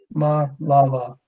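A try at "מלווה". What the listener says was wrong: No, but actually it's ma la va. I mean, it's a vav. Ma la va. Being the va ah is the consonants, and that's one of the reasons why we have this silent hey at the end.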